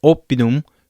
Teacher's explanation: The O is similar to the long O in English. However, it does not have that rounded out sound. When you say O, it is simply O.